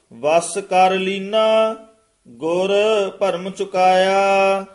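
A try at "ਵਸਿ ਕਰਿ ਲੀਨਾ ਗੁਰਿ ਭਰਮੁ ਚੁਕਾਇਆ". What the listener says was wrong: हांजी ए भी गुर पद ते यमक लाउणी है गुर भरम नहीं कह देना वस कर लीना इथे विश्राम गुर भरम चुकाया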